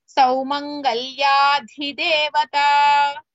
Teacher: ಅಧಿ ದ is ಮಹಾಪ್ರಾಣ ದೇವತಾ ದ is ಅಲ್ಪಪ್ರಾಣ